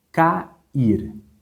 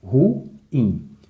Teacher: Olha só, a palavra cair. Nós temos duas sílabas, porém você observa que uma vogal ficou em uma sílaba e a outra vogal ficou na segunda sílaba. O A ficou em uma, o I ficou em outra. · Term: hiato